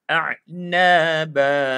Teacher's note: Kita dah jadikan dia mad iwad dengan 2 harakat. Dah tak ada bunyi N tu. Tanwin tu dah tak ada.